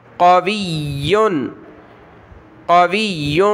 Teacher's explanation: واو کو یا کے ساتھ ملائیں گے